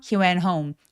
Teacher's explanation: went home 할 때 티소리 안 내고요